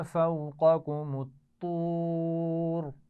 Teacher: اور فوقکم الطور ملا کر پڑھے جائیں گے. طور میں طا کو بھی موٹا پڑھیں گے اور وقف کرتے ہوئے را کو بھی موٹا پڑھا جائے گا